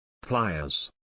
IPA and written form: ˈplaɪ.əz (Pliers)